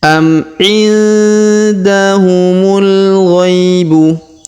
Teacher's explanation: Huruf nun sukun bertemu da, maka kita dengungkan dan kita samarkan.